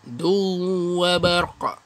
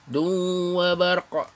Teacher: Tanwin bertemu dengan huruf waw. Du wa barqa. Munculkan mulut dan sedikit dengung.